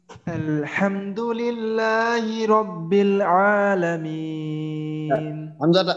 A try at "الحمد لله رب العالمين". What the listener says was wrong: হামজাটা একটু শক্ত করে আর একবার বলেন তো। رب الراটা জানো মোটা হয় رب, হ্যাঁ